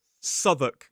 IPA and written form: ˈsʌðək (Southwark)